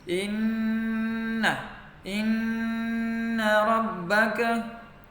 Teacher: Sini ada inna rabbaka, ada nun tasydid, berarti baca dengung selama 3 harokat. Inna rabbaka.